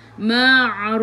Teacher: Ma'ar ili sukun, boleh baca 2, 4 atau 6 harakat, matikan dengan huruf fa. Bila berhenti ada huruf fa, kita berhenti dengan hamas. Kena ada angin lah. Ma'ruf. Lepas angin tu.